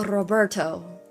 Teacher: the Spanish R is a little different. You guys do a light R roll